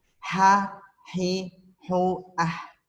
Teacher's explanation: Tapi kalau ha, hi, hu, ah agak sedikit kita tarik. Jadi ada rasa nafas gitu.